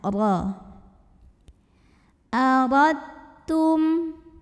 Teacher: Wa in aradtum, huruf ra dibunyikan secara tafkhim karena ro-nya berbaris di atas, yaitu fathah. Maka cara membaca ro-nya ditebalkan, pangkal lidah kita terangkat.